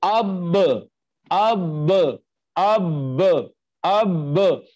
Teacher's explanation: दोनों होंठों का अंदर वाला तर हिस्सा मिला है आपस में, तो बा अदा हुई है